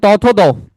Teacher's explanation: দন্ত ব্যঞ্জন যেগুলা, ওগুলো উচ্চারণের সময় আমার জিভ দাঁতে গিয়ে টোকা দেয়, এই জন্য দন্ত ব্যঞ্জনের প্রধান ইয়ে হচ্ছে জিভের ডগা।